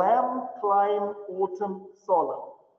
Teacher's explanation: Также упрощаются конечные сочетания согласных. «М», «мн», там остается только «м», поэтому «lamb», «climb», «autumn», «solemn».